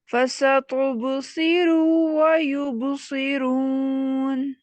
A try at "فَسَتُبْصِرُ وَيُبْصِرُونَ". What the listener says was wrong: دیکھیں ملا کے پڑھنے سے کیا ہو رہا ہے کہ آپ کا را کا جو ضمہ ہے وہ کھینچ رہا ہے، ٹھیک ہے، اس کو کھینچ رہی.